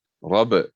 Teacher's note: And then the last one is ba, sukun. Robert, because ba is huruf qalqalah, so we have to give the bounce sound, bouncing sound